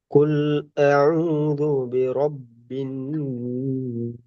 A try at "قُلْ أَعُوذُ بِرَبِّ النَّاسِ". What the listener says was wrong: நாஸ் நீட்டுறது பிள்ளை. அப்ப உண்ணா செய்யறது வேற, நீட்டுறது வேற. அது ரெண்டையும் விலை கொள்ளணும். உண்ணா செய்யறது வேற, நீட்டுறது வேற.